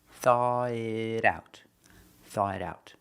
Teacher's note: The T in it changes to a D sound in American pronunciation, a fast D.